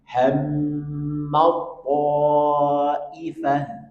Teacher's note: Huruf ta bertemu dengan po, maka langsung masuk ke huruf po.